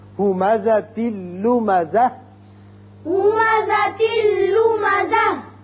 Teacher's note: ہمزۃ لمزۃ، ہمزۃ لمزۃ، جب ہم یہاں وقت کریں گے تو یہاں قاعدہ یاد رکھیں کہ جب بھی یہ تا گول ہتائیہ جسے کہتے ہیں یہ اس پر وقت کرنا ہو تو وقت کی صورت میں یہ ہا بن جاتا ہے، ملانے کی صورت میں تا رہتا ہے۔